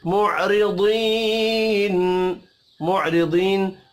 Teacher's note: کو ایک الف کے برابر کھینچ کر پڑھیں گے معرضین معرضین را کو زیر کی وجہ سے باریک پڑھیں گے · یا مدہ کو ایک الف کے برابر کھینچ کر پڑھیں گے